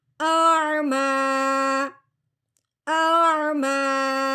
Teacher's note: پہلے حمزہ کی آواز نکلے گی، اس کے بعد عین کی، بالکل اکٹھا نہیں کرنا. حمزہ عین زبر آ، دونوں کو عین نہیں بنانا، دونوں کو حمزہ نہیں بنانا.